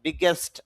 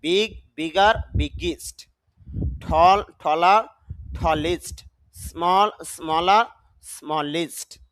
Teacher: ইএসটি এর উচ্চারণ এস্ট না হয়ে ইস্ট এর মতো হয়। দেখেন, আমরা তো এস্ট বলি একার দিয়ে, না, ইস্ট রস্বইকার দিয়ে হবে, ইস্ট।